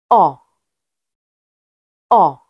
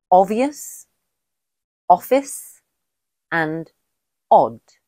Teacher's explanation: The /ɒ/ sound is created by opening the mouth in a circular shape with the tongue pulled slightly backwards in the mouth, creating a short, pulsed sound. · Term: short vowel